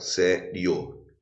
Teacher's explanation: Um ditongo crescente, por quê? Porque primeiro vem a semivogal I e depois vem a vogal O. Vou botar até assim, o I pequeno e o O grande para indicar que o I é semivogal e o O é vogal.